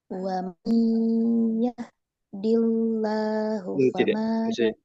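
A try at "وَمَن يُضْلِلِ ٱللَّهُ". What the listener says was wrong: masih lagi masih di ditipiskan lagi. Dillahu bukan dillah tapi dillahu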